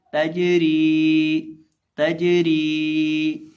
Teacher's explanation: अब यहाँ हम जीम को कलकला करके यानी जीम को हिलाकर पढ़ेंगे क्योंकि जीम भी हरूफ कलकला में से है। और इसी तरह रॉ को हम बरीक करके पढ़ेंगे क्योंकि रॉ के नीचे देर है। और इसी तरह रॉ को हम एक अलिफ के बराबर खींच के पढ़ेंगे क्योंकि रॉ के बाद या मद्दा है। · ता ज़बर जीम तज, रा ज़ेर यरी, तजरी। अब यहाँ हम जीम को कलकला करके यानी जीम को हिलाकर पढ़ेंगे क्योंकि जीम भी हरूफ कलकला में से है।